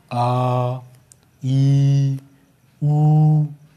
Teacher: ह्रस्व से अधिक यानी कि दुगना, लगभग दुगना समय लगता है, जिन्हें दीर्घ स्वर कहते हैं।